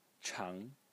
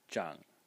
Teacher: The first one is chang in the second tone, and the second pronunciation is zhang in the third tone.